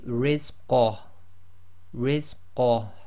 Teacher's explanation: Okay, but if you're stopping, again the ha goes sakin, so this will simply be rizqah, rizqah, and again you've got to bring a tiny bit of the ha from the bottom of your throat